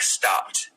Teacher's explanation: Even though it's written with ED at the end, you use kind of a T sound at the end.